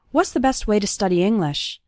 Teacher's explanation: the word to becomes ta, and it's just barely pronounced at the end of way